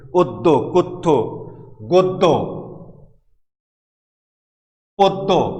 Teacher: পদ্য, কথ্য, দেখো প্রত্যেকটারই দ্বিতীয় ধ্বনিতে গিয়ে, দ্বিতীয় বর্ণে গিয়ে জ ফলা যুক্ত হয়েছে, তাহলে পূর্বের যে অ রয়েছে এটি ও উচ্চারিত হচ্ছে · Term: সংবৃত উচ্চারণ